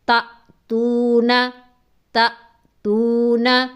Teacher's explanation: پھر دوسری بات ہم نے اس تختی میں یہ سمجھنی ہے کہ الف جو ہے، الف کے اوپر حمزہ آ جائے، یعنی حمزہ نہ بھی لکھیں، صرف اوپر جزم آ جائے تو وہ الف نہیں رہتا بلکہ حمزہ بن جاتا ہے، اسے حمزہ ساکنہ کہتے ہیں، اور وہ جھٹکے سے پڑھا جاتا ہے